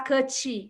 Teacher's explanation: Você vai falar cut, você fala cut, com o T morrendo nos dentes de cima. Então, ele não é bem pronunciado, ele fica um pouco mais retraído. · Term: T mudo